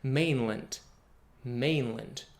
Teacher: If the word is old, like for example, mainland, the word was introduced first in the 14th century, and it makes sense to reduce that last vowel over time, to use the lazy schwa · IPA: [ə], ə